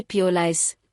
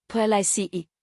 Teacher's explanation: Standard, p o l i c e, stress on lice.